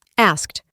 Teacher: en la pronunciación reemplazamos la D por una T, asked, y la K no se pronuncia tan fuerte como anteriormente.